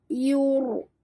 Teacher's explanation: Huruf ra itu mati, huruf sebelumnya baris depan kena baca tafkhim, tebal. Yur, naikkan lidah ke atas.